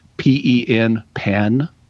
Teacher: pen gets pronounced the same as p i n pin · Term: Vowel Shift